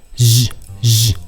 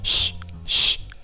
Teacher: 자, 유성음, 무성음 차이. 즈, 즈 목젖을 울려주면 유성음이고 목젖을 울리지 않으면 쉬, 쉬 무성음이 되겠습니다.